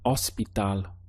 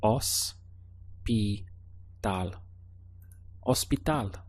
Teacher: Hopefully you remembered that the H is silent in Spanish